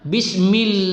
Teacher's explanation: ya laanya kita panjangkan sedikit